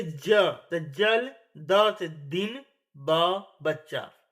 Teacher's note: तो इन सभी अक्षरों के बोलते समय गले में कंपन महसूस होता है। इसलिए हम इन्हें घोष व्यंजन कहते हैं। · जिन व्यंजन के उच्चारण में कंठ की स्वर तंत्रियां कंपन करती हैं उन्हें हम घोष व्यंजन कहते हैं।